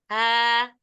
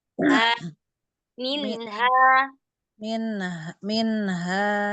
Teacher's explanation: Jangan ada hamzah. Jangan tambahan hamzah.